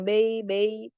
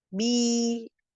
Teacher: Bi-nya itu kasroh, jangan bei, rahangnya diturunkan, tengah lidahnya dinaikkan karena vokal i